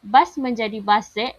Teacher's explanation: S dipindahkan daripada koda ke onset suku kata baharu